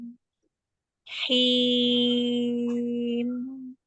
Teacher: Jangan langsung pergi tapi mimnya tertahan dulu ya. Karena ada durasi panjang yang harus dijaga pada sifat bainiyah.